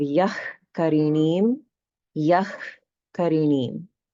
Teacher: So that means that this visarga will be pronounced as yah, yah. This is the jihva mulya form of visarga, meaning that it's pronounced at the root of the tongue.